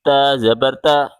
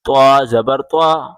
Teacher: طا زبر طا، تا زبر تا، اس طرح نہیں پڑھنا ہے، موٹا طا ہے، زبان کی نوک اوپر کے تالو سے ٹچ کر کے پڑھیں۔